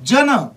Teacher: होतोय ज ला य जोडल्यासारखा होतो आणि ज्यावेळेस ज ला य जोडल्यासारखा ज चा उच्चार होतो त्यावेळेस तो उच्चार असतो कोणता तालव्य कोणता उच्चार असतो तालव्य असा उच्चार असतो जन मधल्या ज चा